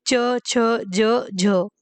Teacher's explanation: इसमें स्पर्श भी होता है और संघर्ष भी होता है। दोनों इसलिए दोनों होते हैं, इसलिए इसको स्पर्श संघर्षी व्यंजन कहा जाता है।